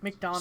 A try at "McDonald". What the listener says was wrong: Small aside, it's not McDonald's, it's McDonald.